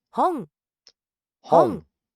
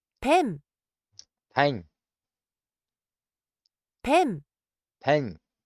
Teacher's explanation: You can hear the N, the on, the n is very soft and drawn. It's drawn out. 本、 Hong. And you hear the tongue going into the back of the roof of the mouth, up against the throat.